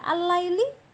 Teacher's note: Sekalipun di sana terdengar ada ya bunyi lam, tapi itu bukan berarti idhar komariah, tapi idgham samsiyah